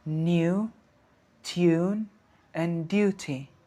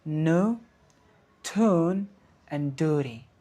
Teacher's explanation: in some words, there's a U sound which is introduced in British English, whereas there is none in American English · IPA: /juː/